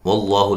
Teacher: لفظ اللہ کو موٹا ادا کرنا ہے، اس سے پہلے حرف پر زبر ہے